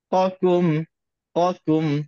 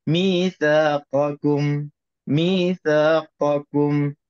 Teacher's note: kaf itu makhrajnya dah diturunkan bawah sedikit dari makhraj qaf, dan dari segi sifat pun qaf itu dah ada musta'liyah, ada huruf tebal, ada sifat tebalnya, dan kaf itu dah ada sifat mustafillah, ada sifat rendahnya ataupun tipisnya.